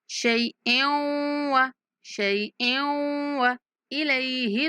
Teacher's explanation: حمزہ کی تنوین کو واو کے ساتھ ملاتے ہوئے غنہ کے ساتھ ادغام کریں گے